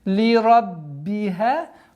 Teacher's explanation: Здесь буква «б» удваиваем, немножко давлением.